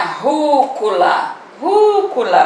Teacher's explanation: o ru é a antepenúltima então uma palavrinha proparoxítona